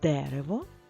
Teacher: ми чітко чуємо звук е адже він під наголосом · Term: наголошений звук е